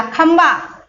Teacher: अगर भा बोलोगे आप, होठों को आपको मिलाना पड़ेगा, तब बोलोगे तो आधा माँ निकलेगा